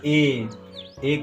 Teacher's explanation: ए का मतलब आगे वाला, जीभ के आगे वाला भाग सक्रिय हो रहा है। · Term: अग्र स्वर